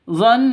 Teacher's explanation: Nun tasydid guna musyaddada dengan dua ketukan, ya. Ditahan dua ketukan jika berhenti.